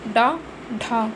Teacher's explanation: इसमें जीभ की नोक तालु को कुछ दूर तक छूकर मुख्य द्वार को झटके से खोलती है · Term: उच्छिप्त